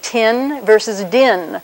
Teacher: in each case the tongue comes up to the alveolar Ridge closes off the whole vocal tract for a second